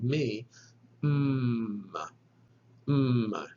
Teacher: try the labial nasal voiced consonant me kind of like the english m again with your hand on your throat feeling for this vibration